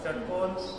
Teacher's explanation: आणि षकार षटकोन जीभ एकदम वळून जाते आणि मूर्धाला लागतो. मूर्धा म्हणजे इथं आतमध्ये एक खड्डा आहे, त्याला मूर्धा म्हणतो.